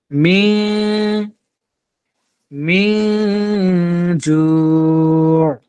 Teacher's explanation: ইকফার 15 হরফের একটা এজন্য আমরা এই নুন কে কিন্তু পড়বো নুন সাকিন কে পড়বো আর গোপন করে পড়বো গুন্না করে এক আলিফ গুন্না হবে গুন্নাটার পরিমাণ এক আলিফ হবে মিম মিন